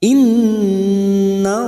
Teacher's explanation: lam jalalah yang sebelumnya fathah kita baca tafim atau tebal